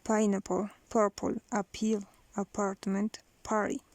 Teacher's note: It's strongly aspirated because they are in the accented syllable.